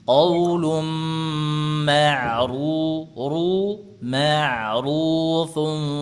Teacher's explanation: Huruf ro naikkan lagi pangkal lidahnya